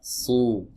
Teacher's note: Kemudian tenggorokan terasa menyempit teman-teman saat kita mengucapkan huruf shad. Ya, berbeda dengan huruf sin.